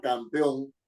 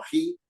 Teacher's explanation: la mayor fuerza de la sílaba está en la última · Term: aguda